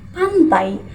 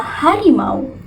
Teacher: Misalnya, dalam kata pantai, bunyi AI itu bukan dua buah vokal terpisah, tapi menyatu menjadi satu bunyi yang khas. Lidah kita bergerak dari posisi vokal pertama ke vokal kedua dengan lancar seperti seluncuran. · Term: diftong